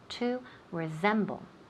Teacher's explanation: we put the emphasis on the second syllable